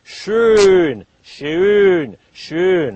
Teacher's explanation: So we say it's an A with pursed lips. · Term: O umlaut